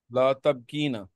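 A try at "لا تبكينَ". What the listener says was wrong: बहुत अच्छा।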